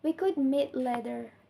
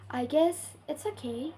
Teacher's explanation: Foul raised intonation combines both patterns and is often used in polite suggestion, uncertainly, contrast, or when something is implied but not directly said. The pitch falls and rises again, creating a soft or reserved tone.